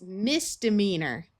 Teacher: You might notice that when we added this prefix, this long E sort of disappeared and turned into a schwa sound of a short U or short I.